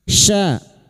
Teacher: fathah diikuti alif 2 harokat kita panjangkan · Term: matabi'i